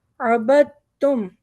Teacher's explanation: दाल नहीं पढ़ेंगे, बा को सीधा ता पे मिलाएंगे